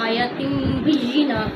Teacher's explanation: یا کو لمبا نہیں کرنا کیونکہ اس پر تو کڑی زبر نہیں ہے نا، آیات آ پر ہے. آیاتم یہ اقلاب میں سے ہے، تم میں بدل گیا. آیتن تھا، یہ آیتم بن گیا